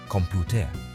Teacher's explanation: the word computer has stress on the second syllable in English, computer, while its Spanish counterpart, computadora, follows the typical rule and stresses the second to last syllable, computadora.